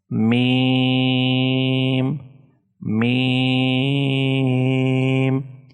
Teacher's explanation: Mim is pronounced by touching the outer parts of the 2 lips